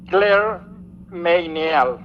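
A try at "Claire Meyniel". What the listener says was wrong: No, es media, la Y no se pronuncia.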